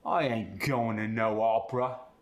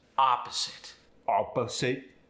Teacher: The ah sound becomes the aw sound.